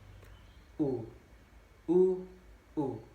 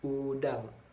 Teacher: menarik lidah ke belakang dan ke atas disertai dengan menghembuskan udara keluar, sedangkan mulut dibundarkan. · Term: Vokal U